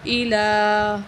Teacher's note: الہ کو لام کا کھڑی زبر ہے، اس کو ایک الف کو برابر کھینچ کے پڑھیں گے